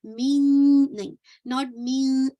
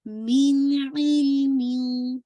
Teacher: साकिन को वाजे करते हुए आप आइन को पढ़ेंगे, मिन इल्मिन, ठीक है, इंशाल्लाह मिन पूरा साउंड कंप्लीट करके फौरन आपने आइन पर आना है। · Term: इजहार